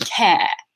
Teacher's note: Most British accents don't actually have that R sound at the end there.